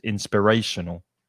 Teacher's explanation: the middle syllable is the strongest